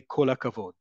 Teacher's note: So, yes, it's kol hakavod, but in everyday Hebrew, you're going to hear people say kol akavod. It all elides together.